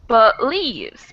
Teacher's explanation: So since the second syllable is the stressed syllable, the first one kind of gets passed over and into that schwa sound.